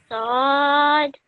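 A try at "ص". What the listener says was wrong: Perfect. That was really, really good.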